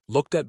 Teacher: The ed ending actually jumps to the next word. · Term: linking